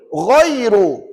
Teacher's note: R tu tebal R tu tebalah tu jangan baca nipis